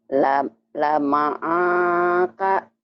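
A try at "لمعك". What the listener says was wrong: pendek semua nggak ada yang panjang. Oh ibu pikir ini ada alifnya, ini bukan alifnya, ini tangkai kaf, tangkainya kaf ya. Lema'aka, lema'aka, kemudian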